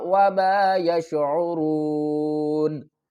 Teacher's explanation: واو ساکن سے پہلے پیش ہے، یہ حروف مدہ ہے، اس کو ایک الف کی مقدار کھینچ کر پڑھیں گے۔ را واو پیش رو، نون زبرنا، وما یشعرون، وقف کی صورت میں نون کو ساکن پڑھیں گے اور را واو پیش رو جو ہے جس کو ہم نے ایک الف کی مقدار کھینچ کر پڑھا ہے اس کو ہم اب زیادہ کھینچ کر پڑھیں گے، کس طرح، وما یشعرون۔